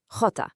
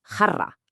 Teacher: This one makes a sound kind of like the H in hat, but it's a little rougher, coming from the back of your throat.